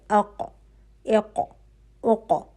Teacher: آپ کی زبان کی جڑ جو ہے وہ اوپر جو بالکل حلق کے پاس نرم تالو ہے وہاں پہ جا کے اوپر لگ رہی ہے